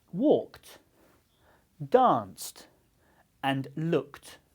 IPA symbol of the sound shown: t